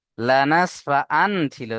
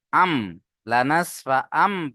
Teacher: আন কিন্তু এখানে পড়তে হবে কি আম লানাসফা আম পড়তে হবে লানাসফা এক আলিফ গুনা করতে হবে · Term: ইকলাব